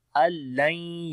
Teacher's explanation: नून साकिन के बाद लाम आ गया, इदगाम बगैर गुन्ने के होता है, हम नून को नहीं पढ़ते